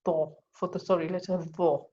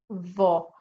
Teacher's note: And this is one of the tafkhim letters, which is heavy. So lifting or raising the back of your tongue makes the letter sound heavy. And that's in all heavy letters, inshallah.